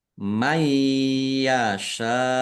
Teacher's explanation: nun sukun bertemu dengan huruf ya. Bacaan idgham bighunah masuk dengan mendengung